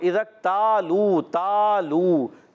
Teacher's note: تا کو ایک الف کھینچنا ہے، لو کو بھی ایک الف کھینچنا ہے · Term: الف مدہ